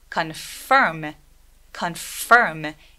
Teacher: F 소리 굉장히 세게 내주시는 게 필요해요.